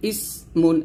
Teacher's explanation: হামজা যেন আইন না হয়ে যায়, সিন যেন সদ না হয়ে যায়, ইস বলতে হবে